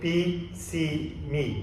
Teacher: The tongue, this is the highest position for the tongue. If you feel your tongue when you say B, C, me, where's your tongue? It's up in the highest position.